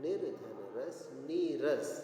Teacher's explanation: जैसे निर्धन रव, निर्धन रव, तो यहाँ पर रा के बाद रा आने से ह्रस्व स्वर जो नी में छोटी की मात्रा वो ई में बदल जाता है, ई में, इसलिए नीरव। निर्धन रस, रा के बाद रा आने से ये जो ह्रस्व स्वर है वो दीर्घ में बदल जाएंगे। निर्धन रस, नीरस।